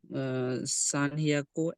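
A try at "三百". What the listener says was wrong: সান হিয়াকু না, সান হলে তখন সান বিয়াকু বলে।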